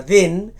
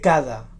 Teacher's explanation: Si ens hi fixem, perquè quan parlem no ens n'adonem, veurem que la pronúncia de la D de dent és diferent de la D de cada. La primera D és oclusiva, mentre que la segona D és aproximant.